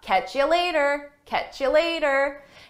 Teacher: And notice I took you and reduced it to ya.